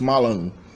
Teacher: So malon, which is to drink, notice that the final A, this final A letter of the infinitive form, is automatically nasal in Chechen. So mala is spelled mala in Chechen, but it's pronounced malon.